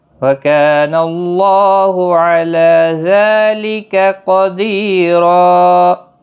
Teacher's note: وکان اللہ کا الف مدہ ہے، ایک الف کی مقدار کے برابر کھینچ کر پڑھیں گے۔